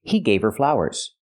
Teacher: you don't hear the H in her because her is not a stressed word